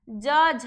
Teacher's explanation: ज और झ, च वर्ग का उच्चारण स्थान होता है तालु। च वर्ग का उच्चारण स्थान होता है तालु।